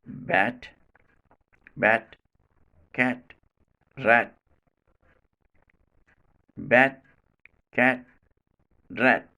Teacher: It is so because when it is in final position, tip of the tongue, which touches the alveolar ridge, still in touch with teeth ridge and not released immediately, and so it is not made plosive